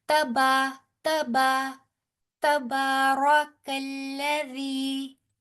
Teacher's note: با موٹا نہیں کرنا بیٹے، را کو پور کرنا ہے